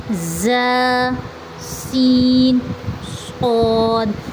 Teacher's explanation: زبان کی نوک بھی ملے گی اور اوپر نیچے کے دونوں دانت بھی آپس میں مل جائیں گے سامنے والے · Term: حروف صفیریہ